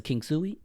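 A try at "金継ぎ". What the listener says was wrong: Kintsugi. But I don't think you said the T.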